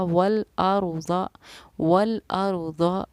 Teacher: रा भी पुर यानी कि मोटी पढ़ी जाती हैं, मुंह भर के पढ़ी जाती हैं